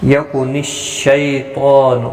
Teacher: یکون الشیطان، شین یا زبر شی، یا لین ہے، تھوڑا نرمی کے ساتھ کھینچ کر ادا کریں گے۔